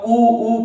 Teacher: जब हम ऊ को बोलते हैं तो सबसे ज्यादा होठों का प्रयोग होता है